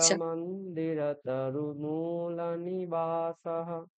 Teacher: সৌরামন্দিরতরুমূল, এই মুতে গিয়ে দীর্ঘ উচ্চারণ